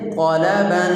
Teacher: طا اس کے اوپر زبر ہے، تو اس کو پہلے درجے سے تھوڑا کم یعنی دوسرے درجے میں اس کو پر پڑھیں گے